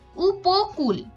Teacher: মাঝখানের অ ধ্বনিটা উকারের পূর্বে বসেছে যে কারণে উচ্চারণটা ও এর মত হয়েছে